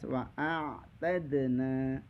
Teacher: dalnya itu adalah mantul, dipantulkan qalqalah